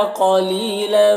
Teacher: قاف کو پر پڑھیں گے، حروف مستعلیہ میں سے